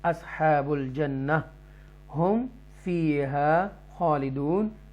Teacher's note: یہاں پر اظہار شفوی کریں گے، میم ساکنہ کے بعد فا آ رہا ہے اس لیے